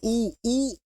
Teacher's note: ऊ देखो ओठ गोल हो रहे हैं तो ओष्ठ